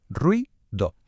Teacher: También puede pasar que dos vocales cerradas diferentes se junten, apoyándose la una en la otra para formar una sola sílaba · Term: diptongo